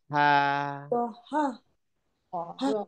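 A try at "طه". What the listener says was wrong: না, তহা বলে ধাক্কা দেওয়ার কিছু নেই। তহা একটা আলিফ আছে, so আমি টান দিব।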